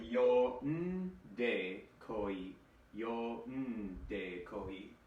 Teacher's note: in Japanese, oftentimes the n sound has its own syllable